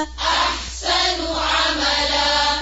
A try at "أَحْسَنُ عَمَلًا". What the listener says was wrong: نون کی پیش کو اور گول کریں اور ہونٹوں کو گول کریں